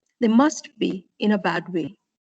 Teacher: So you use a falling tone for the end of the sentence.